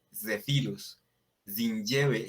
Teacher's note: la Z sería como una pronunciación como a lo francés o como en portugués, que es como una Z vibrante